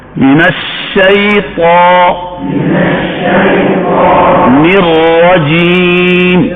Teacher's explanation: اب یہ را کو ہم موٹا پڑھیں گے، اس میں یہ موٹائی صفت عارضہ ہے. اگر کوئی باریک پڑھے گا تو تلاوت کا حسن نہیں رہے گا، تلاوت کا صفت عارضہ کی غلطی ہوگی.